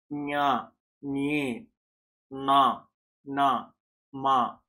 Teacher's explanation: అనునాసికాలు అంటే ముక్కు సాయంతో పలికే అక్షరాలు ఇవి